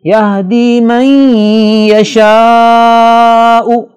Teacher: نون ساکن کے بعد یرملون میں سے یا آ رہا ہے، لہذا نون کی آواز کو یا میں مکس کر کے پڑھیں گے اور یہاں غنہ بھی ہوگا جسے ادغام کہتے ہیں۔